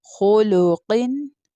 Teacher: خو دم خو، لام دم لو خلو، قاف کسرتین قن خلوقن. قاف مستعلیہ لیٹر ہے، بولڈ لیٹر ہے، اس لیے اس کو تھکر ٹون میں پروناؤنس کریں گے